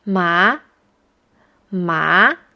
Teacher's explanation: You pronounce words that have this tone in a voice that starts mid-tone and rises to a high tone. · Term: rising tone